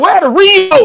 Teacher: She said I would have put the emphasis on moat. She put the emphasis on re.